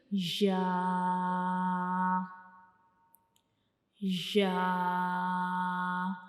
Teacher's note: या को जब हम पढ़ते हैं, या का मखरिज क्या है कि हमारी ज़बान का दरमियान वाला हिस्सा ऊपर की तरफ उठेगा, लेकिन ऊपर का जो मुंह का ऊपर वाला हिस्सा है उसको बिल्कुल टच नहीं करेगा, ऊपर की तरफ जाएगा लेकिन उसको बिल्कुल टच नहीं करेगा, यानी ऊपर वाले हिस्से से जा नहीं मिलेगा।